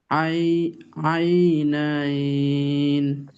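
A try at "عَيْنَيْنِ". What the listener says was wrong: নাইন বলা যাবে না, নাইন। আই নাই, এভাবে।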